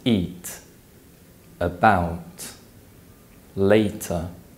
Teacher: are produced by blocking the flow of air through the mouth the T sound is known as an alveolar stop because the flow of air is stopped with the tongue and alveolar Ridge